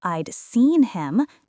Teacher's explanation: The stressed is on the main verb, not the helper verb.